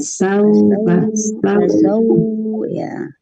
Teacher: Yang sau itu huruf lin. Harokat fathah bertemu dengan waw mati itu huruf lin, membacanya dilembutkan